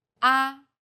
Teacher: Chinese pronunciation is stressed with one of the four different tones the first tone is steady with a high pitch